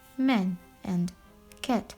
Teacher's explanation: the monophthong a sounds more like e. That's why the words man and cat and many others are pronounced as man and cat, respectively.